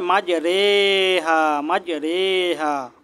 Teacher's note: রো টা এই এমালা করে পড়তে হবে একটু একারের মত করে মাজারেহা মাজারেহা এখানে একটু একারের মত করে পড়তে হবে এখানে মাজারেহা